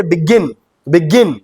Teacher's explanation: gin is the syllable that I'm stressing upon and gin is the last syllable